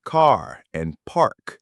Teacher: All that means is that in American English, we almost always pronounce the R sound wherever it's written. It's a hard, strong R. Think of a pirate sound, but maybe a little less dramatic. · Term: roticity